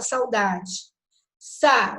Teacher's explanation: o A é mais forte. o U, né, sai como semivogal.